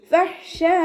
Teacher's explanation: ഫ മഖ്റജ് വരുന്നത് നമ്മുടെ മേലെ മുൻപല്ലിൻ്റെ അറ്റവും താഴെ ചുണ്ടിൻ്റെ ഉൾവശത്ത് വെറ്റായ ഭാഗവും ചേർന്നിട്ടാണ്